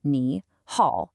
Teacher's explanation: common mistake beginners make is pronouncing it with two deep dips